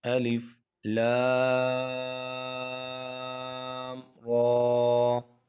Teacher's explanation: ہم نے لام کو تو لمبا کیا ہے کیونکہ اس کے اوپر مد ہے، اور را کو نہیں لمبا کیا، صرف کھینچا ہے ایک الف کے برابر، کیونکہ اس کے اوپر کھڑا زبر ہے، اور کھڑا زبر جس حرف کے اوپر آ جائے یا کھڑی زیر آ جائے یا الٹا پیش آ جائے تو اس کو ایک الف کے برابر کھینچ کے پڑھا جاتا ہے۔